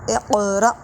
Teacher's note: حمزہ ساکن جھٹکا دیں گے